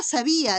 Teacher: están separándose la I, que es vocal cerrada, pero está con tilde, y la A, que es una vocal abierta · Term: hiato propio o acentual